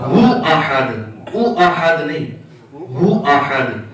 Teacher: قل هو اللہ او احد۔ ادائیگی میں او نکلتا ہے، حالانکہ ادائیگی میں کیا ہے؟ ہو۔